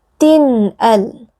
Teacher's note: Cara membacanya adalah dengan memperjelas bunyi tanwinnya atau bunyi nun sukunnya, kemudian membacanya tanpa gunnah yang dipanjangkan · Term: izhar halqi